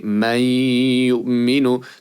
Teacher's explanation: They completely do not pronounce that noon, but they show that the noon does exist by pronouncing its sound. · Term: idgham